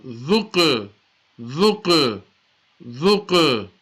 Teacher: Dhal, Qaf, Pesh, Dhuq. That's a Qaf is a qalqala, so echo sound